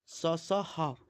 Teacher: इन्हें बोलते समय मुख से ऊष्मा बाहर निकलती है। गर्म हवा बाहर निकलती है इसलिए इन्हें ऊष्मा ऊष्म व्यंजन या ऊष्म संघर्षी व्यंजन कहते हैं।